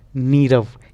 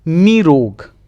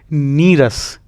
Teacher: रा आए तो विसर्ग का लोप हो जाएगा, ठीक। और ई तथा ऊ दीर्घ ई ऊ में बदल जाएंगे।